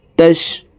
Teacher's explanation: রু 3 আলিফ টেনে নুনকে সাকিন করতে হবে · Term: মুদ্দা আরজি